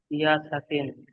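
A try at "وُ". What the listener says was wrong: না, ওয়াসাকিনের ডান দিকে পেশ আছে। ওয়াও মাদ্দা হবে।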